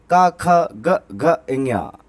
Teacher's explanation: जैसे का वर्ग, का, ख, ग, घ, इंज्ञा, ये कंठ से बोले जाते हैं